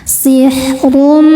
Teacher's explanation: Huruf ra dibaca tafkhim karena berharokat dhammah tanwin, maka ro-nya ini dibaca dengan tebal.